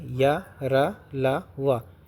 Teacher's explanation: ऊष्म व्यंजन अंतस्थ व्यंजन ये वे व्यंजन हैं जिनका उच्चारण स्वर और व्यंजन का मध्यवर्ती होता है। इन व्यंजनों में श्वास का अवरोध बहुत कम होता है।